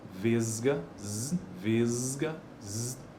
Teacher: Apesar de que na ortografia um s mas olha ele já vibra